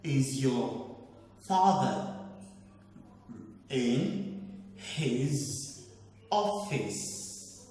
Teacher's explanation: Now, normally the word is pronounced office, but because of the question mark, that kind of question is a yes or no question. So your last word, it has to take a rising tone. And the fact that you want to apply stress to the word office, that shouldn't make you to change the pronunciation to office.